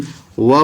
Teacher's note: दंत ओष्ठ से व बोला जाता है